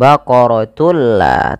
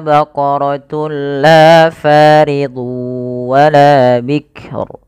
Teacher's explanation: yaitu dengan cara memasukkan tunnya kepada lam dan diganti bunyi suara nunnya menjadi suara lam. Baqaratul la, tapi tidak ditahan. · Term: idgham bila gunnah